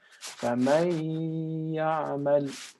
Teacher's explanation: combine the noon sound from the previous word into the next following letter, either the noon sound or the tanween, of course, into the following letter. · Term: ghunna